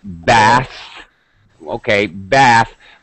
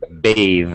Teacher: Now, it's a little more complicated when we're looking at voiceless TH, because normally when we have TH at the end of a word, for example, bath, okay, bath, but when we make it into a verb, we change the TH sound into a voiced sound.